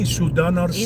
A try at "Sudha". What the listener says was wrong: It's not Sudana. It's Sudha.